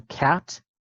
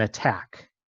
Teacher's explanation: the k sound in cat has more breath coming out of your mouth than the k sound in attack. If you don't believe me, you can put your hand in front of your mouth and say it, and you should feel a bit more air come out when you say cat. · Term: aspiration